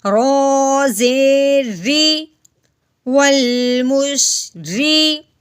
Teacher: رو کے نیچے زیر آ گئی ہے، رو کو ہم نے باریک کر کے پڑھنا ہے